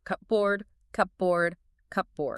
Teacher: If you do that, you will experience a linguistic concept called assimilation. Your mouth just naturally merges the P and the B sounds together. In linguistics, both of those sounds are bilabial consonants, meaning you have to press your lips together to make them. · >> It takes way too much mechanical effort to close your lips for the P, open them, and then instantly close them again for the B. The physical mechanics of your jaw just naturally compress the word into Cobird. >> Your mouth is just seeking the path of least resistance.